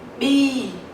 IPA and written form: biː (bee)